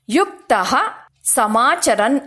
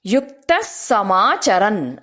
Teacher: ವಿಸರ್ಗ ಆದ ನಂತರ ಸ ಅಕ್ಷರ ಇರೋದ್ರಿಂದ ಯುಕ್ತಹ ಸಮಾಚರನ್ ಅಂತ ಹೇಳದೆ ಸ ಅಕ್ಷರವನ್ನ ಸ್ಟ್ರೆಸ್ ಮಾಡಿ ಯುಕ್ತ ಸಮಾಚರನ್ ಅಂತ ಹೇಳಬೇಕು